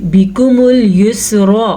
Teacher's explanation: را کو لمبا نہیں کرنا لیکن را کو پر ضرور کرنا ہے